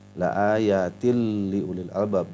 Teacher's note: Jadi ada ta yang bertanwin kasroh kemudian berhadapan dengan huruf lam, jadi dibacanya la ayatil liulil albab. Jadi bunyi nunnya, bunyi nun matinya itu dimasukkan ke dalam bunyi huruf lam di depannya. Itulah idgham bila gunnah, tanpa dengung.